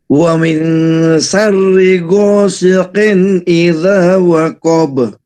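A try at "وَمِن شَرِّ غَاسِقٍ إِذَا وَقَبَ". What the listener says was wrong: Lah, itu baru benar ya.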